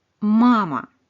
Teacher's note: Le premier A est accentué, on l'entend bien distinctement. Et le deuxième est aton et donc réduit. On entend une espèce de très très court.